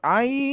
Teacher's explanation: Di 6 harokatkan dulu Bu. Ai-nya lebih panjang dulu.